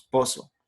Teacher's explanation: La presencia del ceseo, por ejemplo, lo correcto es decir pozo, pero nosotros decimos pozo. Pronunciamos como una S lo que es la Z.